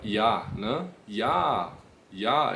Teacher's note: Não tem aquele som de J do J do português ele tem um som de i